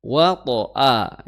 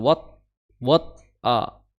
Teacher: to di situ sukun, maka dia memiliki sifat qalqalah ya, qalqalah, kemudian qalqalahnya tebal.